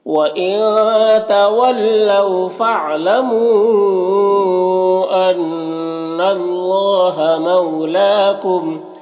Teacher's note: ان اللہ نون مشدد غنہ ہوگا، اور اللہ کلام کو پر پڑھیں گے · فَإِنَّ اللَّهَ بِمَا يَعْمَلُونَ بَصِيرٌ۔ وَإِن کے نون میں اخفا ہوگا، تولوا واولین سے نرم آواز کے ساتھ جلد پڑھیں گے